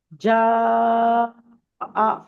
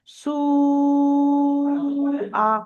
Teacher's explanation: চার আলিফ পরিমাণ টান দেবো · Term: মাদ্দে মুত্তাসিল